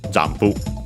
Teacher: Notice again the m pronounced as m, because then we have the p, just like in English, jampu. Of course, the additional u at the end, because we don't have p as an individual sound in Japanese.